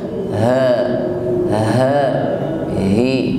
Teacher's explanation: diawali dengan huruf ha, keluar dari makhraj aqsal halq, tenggorokan paling bawah, suaranya menggema.